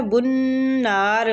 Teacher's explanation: بنار نون مشدد پہ غنہ کریں گے اور کھینچیں گے، الف مد ہے۔